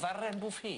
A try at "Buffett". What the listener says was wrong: Buffett wird das ausgesprochen hinten. Ja, nicht Buffet, sondern Buffett.